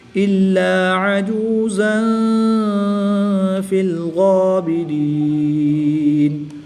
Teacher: دو زبر کی تنوین کے بعد فا حروف اخفا میں سے ہے تو یہاں پر اخفا ہوگا، یہاں پر غنہ زمانی کر کے پڑھیں گے